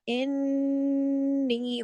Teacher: تشدید بتا رہی ہے کہ دو نون ہے، کافی بڑا غنہ ہوگا.